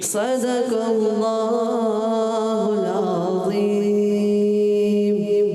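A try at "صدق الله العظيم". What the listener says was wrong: صدق اللہ میں صاد ہوتا ہے موٹا کرنا ہے, اور صدق اللہ اللہ کلام بھی موٹا کرنا ہے, اس میں جلال کلام, اور عظیم میں ضا. صدق اللہ العظیم.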